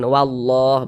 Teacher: maka lafaz Allah kita baca tebal sehingga dibaca wallah.